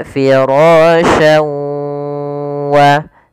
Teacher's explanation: memasukkan huruf tanwin pada lafal syan ke huruf waw, kemudian digunnahkan, ditahan. Karena idgham bi gunnah artinya memasukkan disertai dengan gunnah.